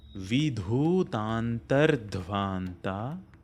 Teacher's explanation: The dha sound is a Mahaprana, both these instances.